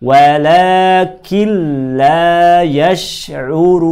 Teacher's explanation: kita harus menggabungkan bunyi nun ke huruf lam. Gabungkan nun dan lam. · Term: bacaan idgham